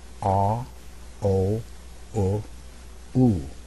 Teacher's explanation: jaw closing a little bit and also this is very important my lips become more and more round